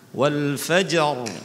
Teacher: hukumnya RO di sini adalah harus dibaca tafkhim yaitu ro sukun yang jatuh setelah huruf yang berharakat fathah atau damah baik langsung atau disela-selai oleh huruf sukun karena waqaf tadi ya